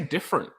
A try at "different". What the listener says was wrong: You put fucking M in the middle of it.